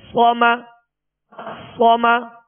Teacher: صاد کو پر پڑھیں گے اور اس میں سیٹی کی آواز پیدا ہوگی